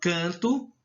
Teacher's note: Já quando eu falo canto, o N não tem som. Ele fica simplesmente um som nasalizado. Você visualiza a letra, está lá a grafia, mas não tem som.